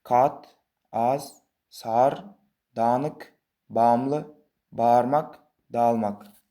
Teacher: Va shu gʻ va nuqtasiz I harfidan oldin kelgan unlini choʻzibroq aytasiz.